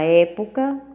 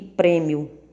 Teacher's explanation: na palavra época o som representado pelo é ele é aberto em prêmio ele é fechado